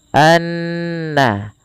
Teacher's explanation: Kemudian pelafal annallaha, ada bacaan gunnah yang dimana gunnahnya adalah dimasukkan ke rongga hidung kita suaranya anna, ya, dan dia ditahan sepanjang 2 harokat. Hati-hati jangan menebalkan huruf na, karena na sifat pada dasarnya sifatnya tipis. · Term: Na tipis